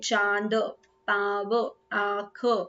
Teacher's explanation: अनुनासिक की ध्वनि नाक और मुंह दोनों से साथ साथ निकलती है, चांद, पाव, आंख, ठीक है, मुंह से भी निकल रहा है और आंख से भी निकल रहा है।